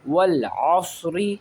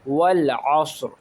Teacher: صاد کو عین سے ملائیں گے، رو کے اوپر سائن ہے زیر کا، رو کو پڑھیں گے رو زیر ری۔ والعصری، اگر یہاں وقف کریں گے تو رو کو ساکن کر دیں گے